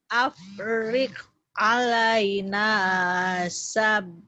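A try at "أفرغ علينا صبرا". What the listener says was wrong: sabro. Bukan sabro, sobro ya, sabar. Emang di Indonesia juga jadi begitu, jadi sabar. Padahal sebenarnya sobar ya. Harus sobar.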